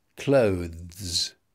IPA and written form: kləʊðz (clothes)